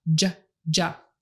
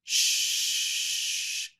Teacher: J is shorter than SH because you're pushing your tongue harder and closer up against your mouth.